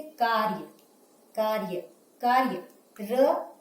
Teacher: यहाँ अ का उच्चारण र के साथ नहीं होता। ठीक है, ये हो गए हमारे कौन सा, रेफ वाला र।